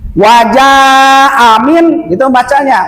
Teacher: Jadi panjang sebab ada bendera, ke depan ada hamzah. Lebih dari 2 harokat. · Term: mad wajib mutasil